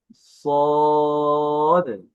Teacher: English সি এর মতো উচ্চারণ হয়, তবে আওয়াজটি একটু মোটা হবে।